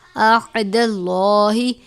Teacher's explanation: یہ عین باریک پڑھیں گے، ہا کو موٹا پڑھیں گے